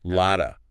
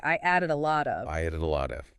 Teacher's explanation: In added and lot of, we have what's called a flap T. In American English, a T between two vowels sounds like a soft, quick D.